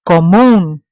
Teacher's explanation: It ends in an N, so I know it has to follow rule number one, but it's pronounced with the stress on the end of the word, so therefore it requires an accent.